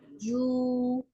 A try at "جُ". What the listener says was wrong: Pendek. Jadi ngelepas ke ainnya natural, jangan ditarik, jangan juang gitu, jangan ada gerakan menarik dari bibir.